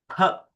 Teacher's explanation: Then the second Varna is Pha, Mahaprana. So forceful exhalation.